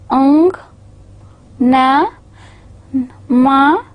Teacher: There is some sort of nasal voice quality that is added to these speech sounds. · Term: nasal sounds